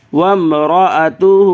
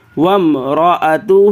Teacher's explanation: واو کو میم سے ملانا ہے۔ یہ واو کے بعد جو الف ہے، اس الف کو میم سے نہیں ملائیں گے، نہیں پڑھیں گے الف کو، یہ ڈائریکٹ واو کو میم سے ملائیے۔